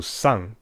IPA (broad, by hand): saŋ